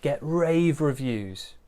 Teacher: Quick bit of pronunciation, get rave reviews. Big stress on rave.